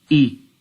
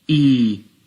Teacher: if we said Hamza, Kasrah, E, which equals 1 beat, and if we said Hamza, Kasrah, Ya, E, and that equals 2 beats.